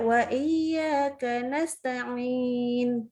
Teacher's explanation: Membaca huruf ain dengan suara sengau keluar dari hidung.